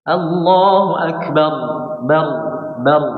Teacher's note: Harus diberikan setengah aliran suaranya ya. Sifat dari huruf ra adalah bainiyah atau setengah mengalir.